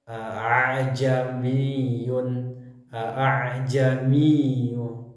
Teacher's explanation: tarqik seperti Hamzah pada umumnya sedangkan Hamzah yang kedua dibaca Tasil cara membaca dengan membunyikan Hamzah seperti Huruf ha yang samar yau itu antara bunyi Hamzah dengan bunyi Alif contoh tafsil yaitu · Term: tashil